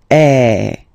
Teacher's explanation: the sound is really open, and normally your mouth should be opened a little bit more than with the accent aigu